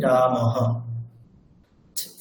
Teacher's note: যখন বিসর্গের কোনো রকম সন্ধি করা হয় না, তখন সেই রকম বিসর্গের উচ্চারণটি হবে হকারের ন্যায়। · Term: বিসর্গের এই যে উচ্চারণটি